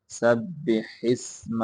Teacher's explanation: ہاں کو آگے سین کے ساتھ ملائیں گے